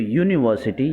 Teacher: یہاں پر دیکھیے یو سے جو واول لیٹر ہے یہ یونیورسٹی لفظ شروع ہو رہا ہے، لیکن جب ہم تلفظ کرتے ہیں تو یونیورسٹی یہاں پر اے کی یا آ کی آواز، حمزہ کی آواز، الف کی آواز نہیں آتی ہے بلکہ یا کی آواز آتی ہے